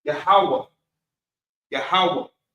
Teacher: So that a sound from the H would drop off and you get you get kind of a breath at the end of it with the H with the ha. Normally when that vowel sound drops off of the ha and that ha is attached to another character that vowel sound drops off and you just kind of give it's it's really just like a breath at the end of it.